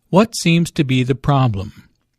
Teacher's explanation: Notice that the intonation falls at the end of the question.